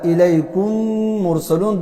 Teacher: دو میمونه دي، نو شونډې یو ځل په دې سره بندې شوې او دا حرف مشدد وګرځي دا ادا شو. دې ته وایي ادغام.